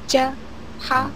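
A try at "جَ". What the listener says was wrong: Ca masih ada c-nya. Bukan ca, ja. Nah, mundurin lagi sampai ke tengah ya, tengah lidah. Ja.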